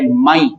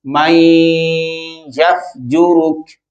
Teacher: मन की आवाज आनी चाहिए थी, मन की बजाय मै। मै कहने से नून साकिन जो था या में मुदगम हुआ और साथ में आपने आवाज को लंबा किया नाक के अंदर, तो उसे गुन्ना कहेंगे।